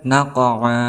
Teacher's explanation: Kemudian naqa, di sini ada huruf mutaba'i, yaitu alif, sebelumnya berharokat fathah tain, kemudian diwaqafkan ataupun di akhir kalimat, maka dihukumi sebagai mad iwad, panjangnya 2 harokat